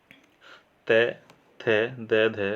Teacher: उनका उच्चारण स्थान है हमारा दंत